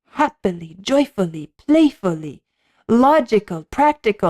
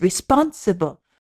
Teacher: 1, 2, 3, 1, 2, 3, 1, 2, 3, 1, 2, 3, which gives it that sort of undulating, rippling, flowing quality, and even in the lyric writing, the choice of words to be so many 3-syllable words in which the first syllable is the strong one, happily, joyfully, playfully, logical, practical, and when you have responsible, still it fits the flow, even though the first syllable is weak, because it's an anacrusis, responsible.